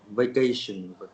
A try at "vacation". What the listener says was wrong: good job.